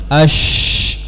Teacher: disertai dengan sifat tafasyi, menyebarnya udara di mulut.